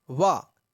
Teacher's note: जो वा होता है उसका उच्चारण स्थान दांत भी होता है और ओष्ठ भी होता है, इसलिए उसे कहते हैं दंत्योष्ठम।